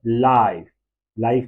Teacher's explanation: आ से ई की तरफ इसमें ग्लाइड हो रहा है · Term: डिप्थोंग